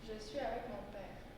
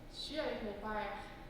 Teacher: I enlarged the vowel for père and made it longer.